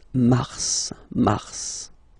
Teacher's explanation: normally final S is not pronounced in French. Okay, we've got some exceptions and this one is one of them. So mars, pronounce the final S, mars, mars.